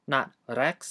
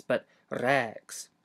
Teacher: You're going to have to pronounce the beginning of this word without closing your glottis, and then pronounce the middle of it by closing and releasing your glottis. Also, remember to pronounce the e in rex twice as long as normal.